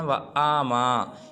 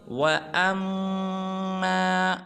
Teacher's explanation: بعض مسلمان پڑھ دیتے ہیں وَآمَا، یہ بالکل غلط ہے، حمزہ کو لمبا نہیں کرنا بلکہ حمزہ کو آگے میم مشدد کے ساتھ ملائیں گے اور میم میں غنہ کریں گے